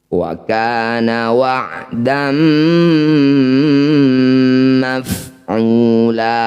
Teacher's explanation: ain sukun ya ini mempunyai sifat yang disebut tawasub jadi antara mengalir dan ditahan. Wa makhrijul, asal hurufnya berada di tengah tenggorokan.